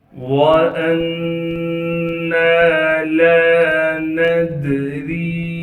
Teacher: واو کو بغیر کھینچے بغیر غننے کے پڑھیں گے، حمزہ کو بغیر جھٹکے کے ہم نے نون سے ملانا ہے